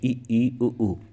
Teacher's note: संवृत में होता है कि लगभग मुंह बंद होता है।